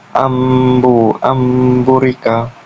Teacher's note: pengucapan nun mati atau tanwin yang bertemu dengan huruf ba maka menjadi mim disertai dengan gunah atau dengung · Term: iqlab